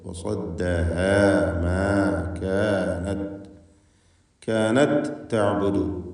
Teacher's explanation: വസദ്ദഹ മാ കാനത്, കാനത് തഅബുദു, താ ശേഷം താവും, താഇനെ തായിൽ പൂർണ്ണമായും ലയിപ്പിച്ച് ഒറ്റ ശബ്ദുള്ള താ ആക്കി ഉച്ചരിക്കുകയാണ്.